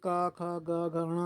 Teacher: तो का वर्ण का उच्चारण स्थान होता है आपका कंठ।